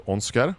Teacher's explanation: in Norwegian accents, they don't pronounce the R's as hard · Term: soft R